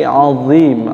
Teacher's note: Shadaqallahul azim, azim bukan azim, bukan ajim, tapi azim, dha, bersih daripada za, bersih daripada z, ya, bersih, tidak ada itu, z, tidak ada, tapi lim, angkat pangkal lidahnya saja, makhrajnya sama dengan zal, seperti itu.